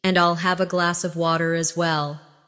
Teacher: In connected speech, glass of sounds like glass-a.